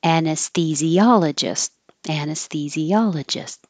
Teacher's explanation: your s may be more in the middle behind the teeth because it's getting ready to come forward for the th which is between the teeth and St so keep the airflow going as much as possible